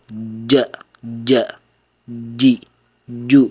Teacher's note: jim ini memiliki sifat syiddah, yaitu ditahan dulu kemudian baru dilepas. Dan juga hal ini yang mengakibatkan huruf jim ini memiliki sifat yang lain yaitu qalqalah.